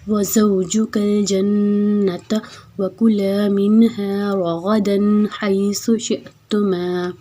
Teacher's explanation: زا کو ہم نے سیٹی سے ادا کرنا ہے